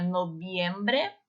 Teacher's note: Lembrando que o V tem o som do B no espanhol